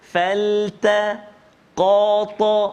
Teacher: Huruf yang kita kena tebalkan bila kita menyebut kalimah faltaqatahu, iaitulah huruf qaf. Pertama huruf qaf dan juga yang kedua huruf ta.